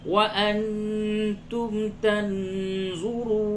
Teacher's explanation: نون ساکن کے بعد تا ہے، اخفا ہوگا